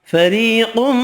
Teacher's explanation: را باریک پڑھیں گے زیر کی وجہ سے، یا مدہ ایک الف کی مقدار میں کھینچ کر پڑھیں گے، قاف حروف مستعلیہ پر پڑھیں گے، ادغام مع الغنہ ہوگا۔